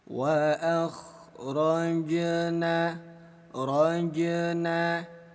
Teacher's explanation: Hukum bacaan qalqalah ingat harus dipantulkan.